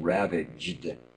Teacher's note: the gd sounds are really going to take a lot of attention to be sure you've got enough vibration in them